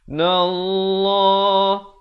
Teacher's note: Lafaz jalalah dibaca tebal 2 harakat.